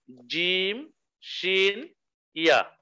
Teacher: জিহ্বার মধ্যখান তার বরাবর উপরের দিকে লাগাইয়া, তালুর সাথে লাগাইয়া